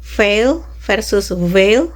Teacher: Both consonant are labiodental fricatives meaning they are made with both upper teeth and lower lip